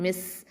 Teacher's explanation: சீனுக்கு என்ன பண்ணணும், ஹம்சு சிஃபத்தை கொடுக்கணும்